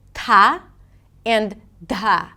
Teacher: these are the aspirated dental T and D. They sound something like this: 'tah' and 'dah'.